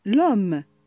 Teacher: Dans le cas de H muette, on lit le mot comme si H n'existe pas en faisant la liaison.